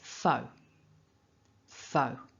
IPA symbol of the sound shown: əʊ